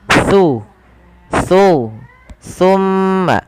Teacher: Huruf tsa ini tempat keluarnya adalah ujung lidah bertemu dengan gigi seri atas. Jadi ketika kita melafalkan tsa, pertemukan antara lidah kita, ujung lidah kita dengan gigi seri atas.